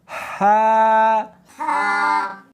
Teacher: ہا نہیں پڑھنی بلکہ اس کو حلق میں سے نکالنا ہے، سینے میں سے نہیں نکالنا